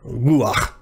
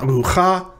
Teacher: that ah sound just sort of sneaks in there before the final consonant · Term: furtive patach